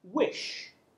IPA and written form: wɪʆ (wish)